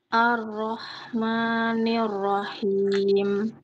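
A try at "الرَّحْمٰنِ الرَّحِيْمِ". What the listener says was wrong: Ketika membaca huruf ro-nya harus tebal suaranya. Arro, arro. Yaitu pangkal lidahnya sudah naik.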